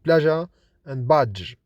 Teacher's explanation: Both are voiced, that is, they are produced with vibration in the vocal cords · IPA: /ʒ, d͡ʒ/